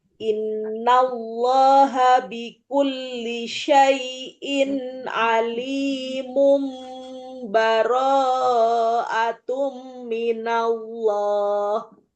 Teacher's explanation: Nah, itu kalau diwasol, kalau diwasol alimun ketemu sama ba, maka dia tanwin ketemu ba. Hukumnya yang dipakai alimum.